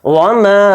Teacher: یعنی یہ جو اوپر مد ہے الف کے تو یہ مد منفصل ہے, اس کو 3 الف کی مقدار کھینچ کر پڑھیں گے میم الف کے ساتھ